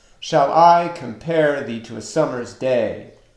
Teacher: So there is a repeating pattern of unstressed, stressed, unstressed, stressed, unstressed, stressed, unstressed, stressed, unstressed, stressed in each line. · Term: iambic pentameter